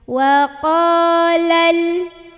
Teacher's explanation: lamnya gak boleh mantul, ujung sisi lidah tempel ke gusi, jangan dilepas sebelum bunyiin huruf i ya, huruf di depannya.